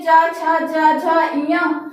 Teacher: चा वर्ग में चा, छा, जा, झा, इया का उच्चारण स्थान तालु है